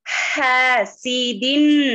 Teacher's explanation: حرف حلقی ہے وسط الحلق سے ادا ہونے والا ہے اور اس کے ساتھ الف مدہ ہے ہا الف مدہ کو